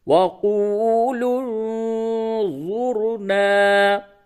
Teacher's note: یہ نون ساکن کے بعد ضا آیا، اس جگہ پہ اخفا کیجئے